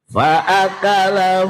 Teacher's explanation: Memantul secara spontan iku qalqalah